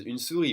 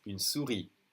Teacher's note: we don't say the final S.